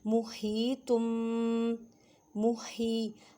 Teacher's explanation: हा को हलक के दरमियान वाले हिस्से से अदा करें, हा को कलिफ की मिक़दार में खींच कर पढ़ें।